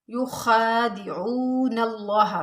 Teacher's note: युखा में खा के ऊपर खड़ा ज़बर है, इसको हम खींच के पढ़ेंगे थोड़ा सा